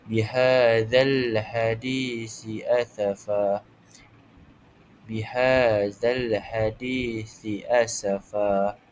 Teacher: Cara bacaannya dipanjangkan ketika berhenti dibaca dengan baris satu di atas berserta dua harakat. Jadi kita akan anggap terdapat satu baris sahaja kerana pada wakaf ataupun pada pengakhiran ayat tersebut. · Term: mad iwad